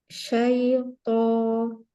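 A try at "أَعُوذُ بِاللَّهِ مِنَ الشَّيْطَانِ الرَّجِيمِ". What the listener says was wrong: Toknya ya toknya mau pangkal lidahnya mau naik ya. Huruf itbaq, huruf tebal. Syaitonir rajim.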